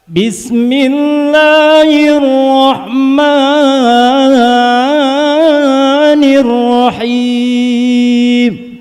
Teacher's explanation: bacaan 2 harokat yang harusnya singkat jadi lama karena mengejar irama · Karena itu mengejar irama. Menurut aturan tajwid, Bismillah dan Ar-Rahman itu cukup 2 harokat, barusan kepanjangan.